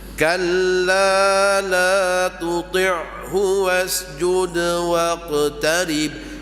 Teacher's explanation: Ain dia tak bunyi di hidung tuan-tuan. Ya. Baca ain bunyi di hidung kurang fasih.